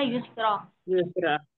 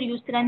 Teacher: جی کیونکہ دو زبر کی تنوین تھی، تنوین ہے. را پر دو زبر کی تنوین ہے، تو ایک زبر جو ہے وہ ختم ہو جائے گا، ایک زبر پڑھا جائے گا الف کے ساتھ